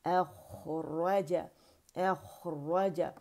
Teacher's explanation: اچھا، پھر ہے اخرج، اے حمزہ فتح اے، خا موٹی، اخرج، اخرج، اخرج، را بھی مخفم ہے، خا بھی مخفم ہے، را میں جو ہے رخاوہ آواز چل رہی ہے اسے شو کریں گے